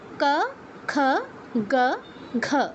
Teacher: জিহ্বার পেছনের অংশটা কিন্তু কণ্ঠেই টাচ করছে। ক, খ, গ, ঘ, এই 4টা উচ্চারণের ক্ষেত্রেই সেমভাবে জিহ্বার পেছনের অংশটা কণ্ঠে টাচ করছে।